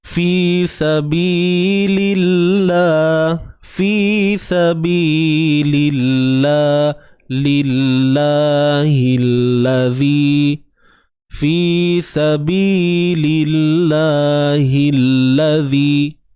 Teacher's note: Kalimah Allah dibaca dengan nipis. Hilladzi, huruf ha baris bawah terus masuk pada lam yang bersabdu ni.